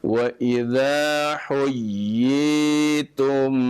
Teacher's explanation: ada tasydid dulu, kemudian baru dimadkan ya.